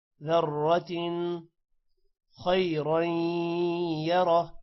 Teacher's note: يومئذ يصدر الناس أشتاتا ليروا أعمالهم فمن یہاں پر غنہ ہوگا، فمن يعمل مثقال، قاف موٹا ہوگا اور الف کی وجہ سے قا لمبا ہوگا، مثقال ذرۃ، را موٹا ہوگا اور تن پر غنہ نہیں ہوگا کیونکہ آگے حروف حلقی آ رہا ہے، ذرۃ خیرا یرہ، خا موٹا ہوگا، را موٹا ہوگا